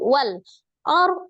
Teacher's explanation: Wal Arham ada alif lam qamariah ditandai dengan sukun Wal Ar ro sukun sebelumnya fathah Ar dibaca rnya tebal ya tafkhim